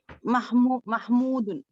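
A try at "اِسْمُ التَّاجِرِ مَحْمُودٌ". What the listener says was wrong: इस्मुत ताजिरु महमूदुन, very good.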